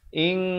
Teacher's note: Ikhfa hakiki, samarkan di antara bunyi nun dan bunyi kaf kadar panjang dua harakat.